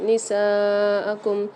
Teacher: سین کے ساتھ الف مدہ اور مد آ رہا ہے، تو اس کو 5 سے 6 الف مدار کھینچ کے پڑھیں گے